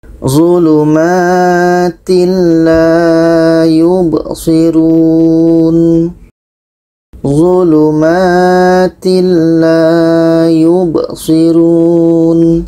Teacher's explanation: Lam bermakna adalah tidak dengung. Tanwin bertemu lam tidak dengung.